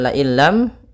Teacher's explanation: sukun atau An In Un bertemu dengan huruf lam dan ro maka suara nunnya atau tanwinnya langsung masuk ke lam dan hukum tajwidnya kita namakan dengan Idgham bila gunah yaitu idgham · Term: idgham bila ghunah